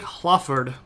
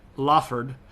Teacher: if we take Hlaford and we drop the breathy stuff, we get Laford. And the F is such an easy sound to lead out, especially if we're talking really quickly and we don't want to go Laford, we just go Laford or Lard.